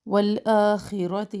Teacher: خا موٹا پڑھیں گے، را کو بھی موٹا پڑھیں گے